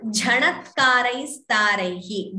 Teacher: Jha Mahaprana should be clearer.